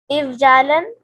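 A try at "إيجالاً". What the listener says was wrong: ای جالن. یہاں پر ہم یا لگائیں گے کیونکہ پیچھے زیر ہے.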